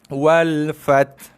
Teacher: kita hanya membunyikan huruf ta mati saja. Kita dah gugur, buang, dah campak dah huruf ha itu.